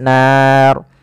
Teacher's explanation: RO di sini kita hukumi dengan ro tafkhim ro yang tebal tidak boleh dibaca dengan ro tipis kenapa karena dia adanya huruf ro yang disukunkan sebelumnya fathah panjang